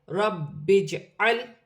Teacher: ہاں کے نیچے کھڑی زیر ہے، با مشدد ہے، جیم کے ساتھ ملا کر پڑھا جائے گا۔ جیم ساکن ہے، حروف قلقلہ میں سے ہے